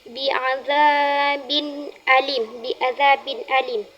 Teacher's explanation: huruf izhar halq yang bacaannya jelas tanpa harus didengungkan. Bahkan ada yang mengatakan tidak boleh didengungkan. · pada kalimat biadzabin alim tidak boleh didengungkan karena alif termasuk kepada hukum bacaan yang sama seperti hamzah yang bacaannya jelas termasuk kepada huruf izhar halqi.